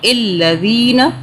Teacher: یہ ذال جو ہے اس کو ہم نے سافٹلی ادا کرنا ہے، زی نہیں پڑھنا، سیٹی کی آواز میں نہیں پڑھنا